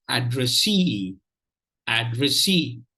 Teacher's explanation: So in this 3-syllable word, the third syllable receives the primary stress.